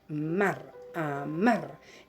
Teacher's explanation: la sílaba tónica ocupa el último lugar, por lo tanto, esta es una palabra aguda.